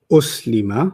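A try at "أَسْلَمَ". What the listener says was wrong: I said as. Oh, so that one's as and then the other one's us.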